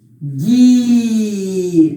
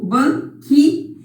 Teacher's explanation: Aqui o G-U. Eu não falo esse U, não é? Eu falo o G e o I. O U eu não falo. Então, eu tenho um dígrafo aqui.